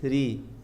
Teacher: ra kalau kasrah harakatnya dibaca tipis